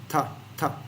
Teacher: so it's short and and dry yeah and the tongue is not going anywhere it's just staying you know by the upper teeth